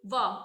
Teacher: दंतोष्ठ है जो इसमें ऊपर के दांत, निचला होठ, जैसे कि वाह, इसमें क्या ऊपर का जो हमारा दांत होता है वो होठ को टच करता है, आप बोल के देखिए वाह, ठीक है।